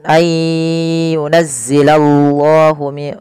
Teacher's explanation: tebalkan lafal Allah karena di situ lamnya lam tafkhim